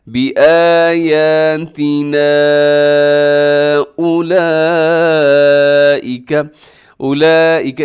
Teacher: اولئک اس میں بڑی مد ہوتی ہے جسے مد متصل کہا جاتا ہے، جس کا کرنا واجب ہوتا ہے۔